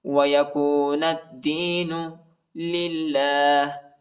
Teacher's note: دال پر شد آئی ہے، دال کو شدت کے ساتھ، سختی کے ساتھ پڑھیں گے